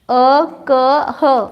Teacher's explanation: अ, क, ह आणि विसर्ग, इनका उच्चारण स्थान कंठ है। क्यों? क से समझना ना, क वर्ग क आया ना उसमें।